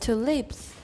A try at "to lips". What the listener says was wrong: Not leaps.